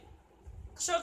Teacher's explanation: इसमें उच्चारण करते समय 2 वर्ण आते हैं, क और श, इसलिए उसको क्ष कहते हैं। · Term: संयुक्त व्यंजन